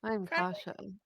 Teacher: he uses his like low breathy voice